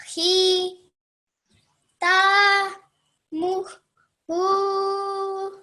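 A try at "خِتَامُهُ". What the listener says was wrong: The khi over here, you pronounce it just a bit longer than 1 second. You have to be very, very careful, okay? Just one single count, 1 second, okay? Khi, ta, mu, hu. Khi, ta, mu, hu.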